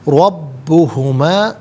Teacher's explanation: را پر زبر ہے، را کو پر کر کے پڑھیں گے. با مشدد ہے، اسے جماع کے ساتھ ادا کیا جائے گا.